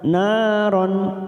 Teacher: Nah fathah diikuti alif 2 harokat, naron